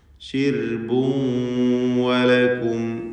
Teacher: ഇവിടെ തൻവീനും ശേഷം വാവും ഇദ്ഗാം ബിഗുന്ന നാഖിസ് നൽകിക്കൊണ്ട് തൻവീനിനെ വാവിലേക്ക് ഭാഗികമായി ലയിപ്പിച്ച് മണിക്കണം